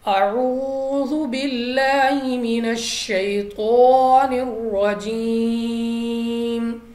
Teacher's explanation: واو ساکن سے پہلے پیش ہے، تو واو مدہ کھینچ کر پڑھنا ہے 2 سیکنڈ تک